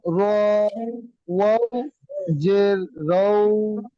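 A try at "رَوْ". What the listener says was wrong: জের নয় আমার সোনা ভাই, জের নিচে হয়, জাবার উপরে হয়। র ও ও জাবার রও।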